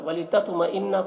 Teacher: تو کو پر پڑھنا ہے اور قلقلہ کرنا ہے، یعنی اس کی آواز میں جنبش ہوگی. مئن نون میں یہاں پر غنہ کرنا ہے.